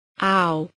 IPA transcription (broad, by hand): ɑʊ